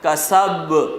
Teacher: سین میں سیٹی کی آواز کے ساتھ نکالیں گے